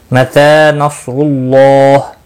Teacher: متی نصر اللہ تا کے اوپر کھڑی زبر ہے، 1 الف کے برابر کھینچ کر پڑھیں گے۔ صاد مستعلیہ ہے، پر پڑا جائے گا، را پیش کی وجہ سے پر ہوگا، اللہ کا لام اس پیش کی وجہ سے پر پڑا جائے گا، اور اس کے اوپر کھڑی زبر بھی ہے، 1 الف کے برابر کھینچ کر پڑھیں گے، اور وقف کی صورت میں ہا ساکن پڑا جائے گا۔